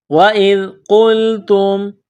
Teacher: قاف کو موٹا کرنا ہے، قاف کو لام کے ساتھ پلس کرنا ہے، تا کو میم کے ساتھ ملانا ہے، تا کو باریک کرنا ہے۔